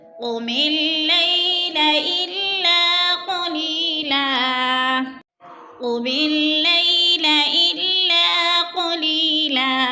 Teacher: قلی پہ یا مدہ ہے، یا مدہ کو 2 حرکات کے برابر کھینچ کر پڑھنا ہے۔